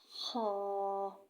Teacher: خا کو موٹا کر کے پڑھا جائے گا۔ خا، اور یہ بھی خا گلے سے ادا ہوگا۔